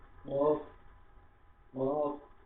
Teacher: আমরা এখানে এই কফটাকে কি করবো? গলা থেকে মোটা ক উচ্চারণ করবো, গলা ভিতর থেকে কফ, কফ। হ্যাঁ, চেষ্টা করুন, আপনি পেরে যাবেন ইনশাল্লাহ।